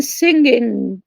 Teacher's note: The velar nasal, so the velar articulation of an N. So, for example, in English, the last consonant in singing, for example.